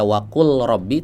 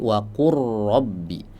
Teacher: Contohnya pada firman Allah Subhanahu wa taala wa qul wa qul rabbi tidak dibaca wa qul rabbi tapi wa qurbi. Lam bertemu dengan huruf ro. dileburkan, ya. · Makhrajnya berdekatan, lam dengan huruf ro. Ulama sepakat lam dan ro kalau bertemu, lamnya sukun, ro-nya berharokat, idgham. Ya, contohnya pada firman Allah Subhanahu wa taala, wa qul rabbi. · Lam bertemu dengan huruf ra. Dileburkan.